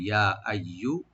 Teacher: ইয়া আইয়ুহা, আইয়ু হামজাটাকে right দিবেন গলার শেষ থেকে, আর ইয়াটাকে ডাবল করে রাইট দিবেন। ইয়ার মাখরাজ হলো ইয়া, জিব্বার মাঝখান তার উপরে তালু